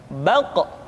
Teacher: Diucapkan dengan suara yang tebal dan dalam posisi sukun, maka terdengar pantulan suara. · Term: huruf Qaf